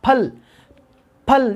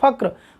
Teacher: फ बोलते समय होठ पूरी तरह से एक दूसरे को चूम रहे हैं, जबकि फक्र जब बोलते हैं तो देखिएगा फक्र होठ एक दूसरे को इतना चूमते नहीं है, इनमें थोड़ा लचीलापन होता है।